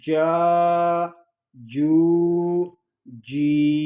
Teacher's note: جیم زبان اور تالو کے درمیان والے حصے سے ادا ہوتا ہے، اور جب جیم کو ادا کریں گے تو اس کی آواز منہ میں پھیل جائے گی